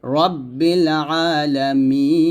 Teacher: মিতে তিন আলিফ টান দিতে হইছে